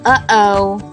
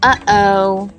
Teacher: also a sound we say but don't really write like uh-oh you can feel your throat closing and opening